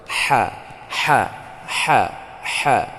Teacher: saat kita membaca huruf ha itu mengeluarkan suara nafas dan memang keluar angin. Ha ya, di tengah tenggorokan. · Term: hamas